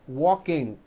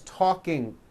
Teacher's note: there's just this little k sound at the end of the ing sound · as a second language have gone into the bad habit of adding a k release sound like that after an ng ending